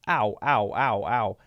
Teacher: we have to do the ah-oo, diphthong. O-U diphthong sound.